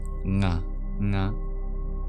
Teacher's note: The N with a dot over it is the guttural nasal, like the N in our NG sounds.